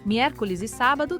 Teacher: As sílabas tônicas são mier e sa.